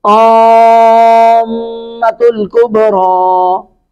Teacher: اب یہاں پہ میم پہ شد ہے، مد بھی ہے، تو ادغام باغنہ ہو رہا ہے. گویا کہ میم پہلے ساکن پڑی ہے، پھر میم مشدد ہے، میم کے اوپر زبر ہے، تو دو میمیں ہیں نا، میم کا میم میں ادغام ہو گیا